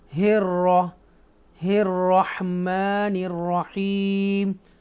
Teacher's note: ये रा को बोल्ड पढ़ेंगे, राइट, मुशद्दा है